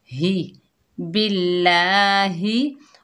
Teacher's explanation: बाकी नीचे ज़ेर, आगे अल्लाह का लाम आ रहा है तो अल्लाह का लाम ज़ेर की वजह से बारीक पड़ा जाएगा।